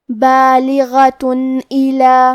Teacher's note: کلمت بالغہ میں حرف الغین کی ادائیگی حلق کے اوپر والے حصے سے ہے، غین حروف تفخیم میں سے ہے، لہذا ہم یہ حرف کو موٹی آواز میں پڑھیں گے. آخری میں تا پہ تنوین پیش ہے، پھر حرف الالف ہے.